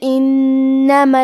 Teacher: کلمت انما میں نون پہ تشدید ہے لہذا ہم دو حرف کے برابر نون کو پڑھیں گے کیونکہ تشدید کی اصلیت دو حرف ہے.